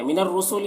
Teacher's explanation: فت اور غتم را کو پر پڑھیں گے اور تم میں ادغام ناقص ہو رہا ہے، تنوین کو میم سے ملا کر غنہ کے ساتھ میں پڑھیں گے۔ من الرسول را مشدد حرف ہے تو پیچھے والے متحرک حرف نون سے مل کر پڑھا جائے گا اور را کو پر پڑھیں گے۔